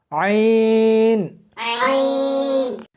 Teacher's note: اس کو حلق میں سے سختی کے ساتھ نکالنا ہے